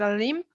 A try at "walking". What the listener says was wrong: The pronunciation of the verb, you never pronounce the L, okay? It's walking.